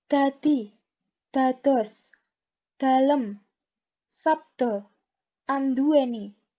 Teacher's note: Untuk D, itu contoh kosakatanya adalah dadi, dados, dalem, sabda, anduweni. Untuk melafalkan kosakata-kosakata ini, itu ujung lidah harus berada di ujung langit-langit mulut.